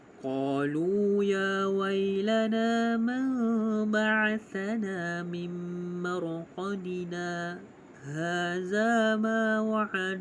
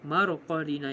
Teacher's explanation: Tanda sin yang kecil dekat atas huruf alif. Dengan bacaan pada mad asli sekadar dua harakat tanpa bernafas, kemudian menyambung bacaan hadza. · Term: saktah